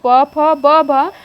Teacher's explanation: प फ ब भ ओष्ठ व्यंजन है